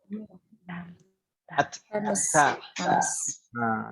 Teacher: Huruf ta itu sebenarnya digusi.